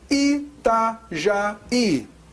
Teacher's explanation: O I tônico que forma hiato com a vogal anterior